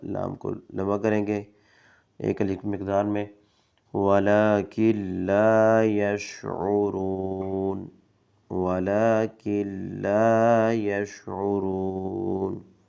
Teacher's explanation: لام کو لمبا کریں گے ایک الف مقدار میں